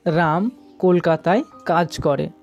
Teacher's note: এই বাক্যে রাম শব্দটির উপর জোর দেওয়ার জন্য আমরা রা এই ধ্বনিতে শাসাঘাত দিচ্ছি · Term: বাক্য শাসাঘাত